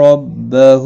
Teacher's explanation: زبر بھی ہے ایک الف کے برابر کھینچ کر پڑھیں گے، رو زبر کی وجہ سے پر ہوگا ، ہا کے اوپر الٹا پیش ہے ایک الف کی مقدار